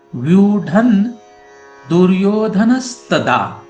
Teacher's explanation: जैसे इस श्लोक में व्यूढ़म, ढ के ऊपर जो अनुस्वार है उसके बाद दुर्योधन इस शब्द का द है। द यह त वर्ग का वर्ण है और इसके कारण इस अनुस्वार का न ऐसे उच्चारण करने की पंचम अक्षर का उच्चारण कर सकते हैं।